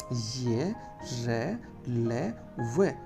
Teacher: जिह्वा मुंह में रहती है लेकिन पूर्ण स्पर्श कहीं नजर नहीं आता। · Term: अंतस्थ व्यंजन